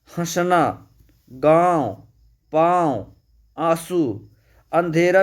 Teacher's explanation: अनुस्वर के उच्चारण में सांस नासिका से अधिक निकलती है, मुख से कम, जबकि अनुनासिक के उच्चारण में या नासिक व्यंजन के उच्चारण में सांस नासिका से बहुत कम और मुख से अधिक निकलती है। · मुख से ज़्यादा नाक से वायु निकलती है